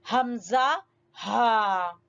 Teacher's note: حمزہ ہا حلق کے سب سے آخری حصے سے، جو سب سے نیچے والا حصہ ہے، وہاں سے حمزہ ہا ادا ہوتے ہیں